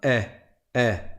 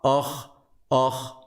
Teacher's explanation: une lettre qui est amincie, c'est-à-dire qui n'est pas emphatique, qui n'est pas grave, c'est un « eh ».